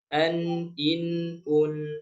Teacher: Ya, kalau bertemu hamzah atau ha atau ain atau ha atau gin atau k maka dibaca dengan jelas. Saat membaca izhar halqi, maka suara nun sukunnya ditahan dengan durasi satu harakat saja. · maka suara nun sukunnya ditahan dengan durasi 1 harokat saja